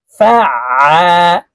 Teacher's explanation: হলকের মধ্যখান থেকে আইন হরফের উচ্চারণ করতে হবে, চাপ দিয়ে উচ্চারণ করতে হবে